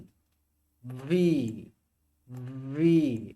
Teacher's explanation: এই ভিটা উচ্চারণ করার সময় নিচের দাঁত উপরে ঠোঁটে একটু হালকা লেগে থাকবে।